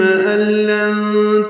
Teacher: ال میں ادغام کامل ہے، نون کی جگہ لام ہی پڑھیں گے، یعنی نون نہیں پڑھیں گے